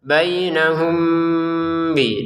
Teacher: Mim sukun bertemu ba dibaca dengan samar. Bainahum bi disamarin dulu ya.